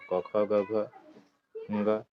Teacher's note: क वर्ग में कंठ से निकलता है कहां से निकलता है कंठ से क वर्ग बोलते है इसको